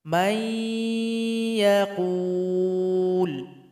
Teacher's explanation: Perhatikan contoh di sini nun sukun berjumpa dengan ya, maka mesti dibaca idgham. Nun sukun ini mesti digabung kepada huruf ya dan mesti didengungkan. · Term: idgham bi gunnah